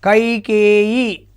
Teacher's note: అంటే కై కేయి అన్నప్పుడు కై అన్నప్పుడు అది గురువు అవుతుంది. కే ఏత్వం దీర్ఘం ఉంది కాబట్టి అది కూడా గురువు అవుతుంది ఇ దీర్ఘం లేదు కాబట్టి అది లఘువు అవుతుంది.